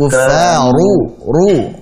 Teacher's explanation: Huruf ra ketika dhammah tebalkan.